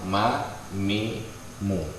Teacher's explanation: Mi itu bertemunya bibir atas dengan bibir bawah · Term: syafatain